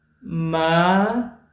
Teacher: Ma, falling rising pitch, means horse.